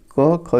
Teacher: क ख कंठ ध्वनियां है